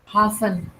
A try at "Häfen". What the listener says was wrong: Okay, aber das ist mit einem Umlaut.